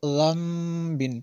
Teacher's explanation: نون ساکن کے بعد با ہو تو پھر یہاں پہ انقلاب ہوگا، اور اس کو میم سے بدل کر پڑھیں گے، اس کو ذنبٍ پڑھیں گے۔